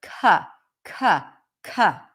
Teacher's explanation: when the C appears before a vowel in a stressed syllable the C is aspirated so it has a little bit of an H right after c c c just like the word cup then we have